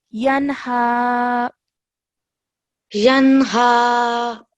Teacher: when ha appears after nun sakin or tanween, then a 2-second nasal sound is not produced. Okay, so over here we would pronounce this as yanha.